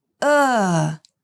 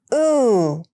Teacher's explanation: These sounds are quite similar, but the uh is shorter than the ooh.